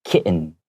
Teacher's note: And even though there are two T's, we often make that T sound very like silent. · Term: silent T